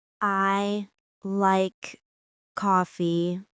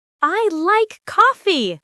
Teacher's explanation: Your voice went up on like and then down. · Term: intonation